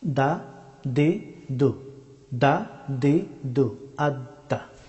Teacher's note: দাল হরফটি উচ্চারিত হয় জিহ্বার অগ্রভাগ এবং সামনের দুই দাঁতের গুড়ি